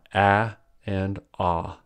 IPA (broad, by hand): æ and ɑ